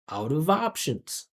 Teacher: No separation. You don't hear any gaps, or you can't hear where each one word starts and one word stops. It's all one sound connected.